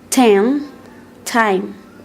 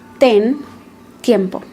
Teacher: the T sound is more plosive in English than in Spanish. It means that there are more air restrictions.